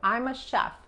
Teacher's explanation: Cuando dices chef es como pronunciar la CH, pero no tocamos los dientes. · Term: SH